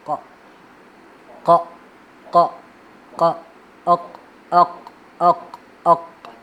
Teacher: مطلب کاف، چونکہ کاف کا جو حصہ ہے نا وہ منہ کی طرف زیادہ ہوتا ہے، تو یہ گلے کی طرف زیادہ، مطلب منہ کی طرف بھی نہیں، گلے کی طرف، ان کے درمیان والے حصہ. یعنی زبان کی جو جڑ ہے وہ چھوٹی زبان کے پیچھے والے حصے کی طرف لگتا ہے، تو اس سے یہ ادا ہوتا ہے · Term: قاف